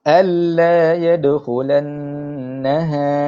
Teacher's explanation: Saya tak baca dia alla. Saya tak dengungkan huruf nun tersebut. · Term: idgham bila gunnah